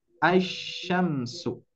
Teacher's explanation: cara bacanya pun juga tidak usah membaca lamnya melainkan diidgamkan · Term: Idgham Syamsiah